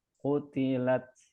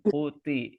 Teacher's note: jadi t-nya seperti tambah h gitu ya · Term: sifat hamnya